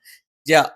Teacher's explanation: ജ, നാവിന്റെ മധ്യഭാഗം മേലെ അണ്ണാക്കിൽ.